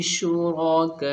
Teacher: اور مد متصل کو کم سے کم 3 الف تو ہمیں کھینچنا ہی ہے۔ اگر ہم 3 الف سے کم اسے کھینچیں گے تو ہمیں اس کا گناہ ملے گا، 3 سے ہمیں اسے زیادہ ہی کھینچنا ہے، 4 5 6 تک بھی جاتا ہے، یہ 3 سے کم نہیں ہونا، 4 5 تک ہمیں کھینچنا ہی کھینچنا ہے، یہ یاد رکھیے گا۔